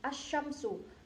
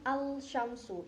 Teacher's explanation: kita langsung memasukkan al-nya itu ke huruf setelahnya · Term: idgham syamsiyah